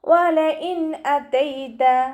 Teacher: വാവുച്ചരിക്കുന്ന സമയത്ത് ചുണ്ടുകളെ വട്ടത്തിൽ പിടിച്ചു കൊടുക്കാൻ ശ്രദ്ധിക്കുക. പല്ലിനെ ചുണ്ടിൽ തട്ടിക്കാതെ നോക്കുക കേട്ടോ. · വലഇൻ അതൈത നൂൻ സാക്കിനയ്ക്ക് ശേഷം ഇവഹാറിൻ്റെ ലെറ്ററായിട്ടുള്ള ഹംസയാണ് വന്നിട്ടുള്ളത്. നൂൻ സാക്കിനയെ വ്യക്തമാക്കി മണിക്കാതെ ഉച്ചരിക്കുക. നൂനിൻ്റെ സൗണ്ടിനെ വ്യക്തമായിട്ട് കേൾപ്പിക്കുക കേട്ടോ.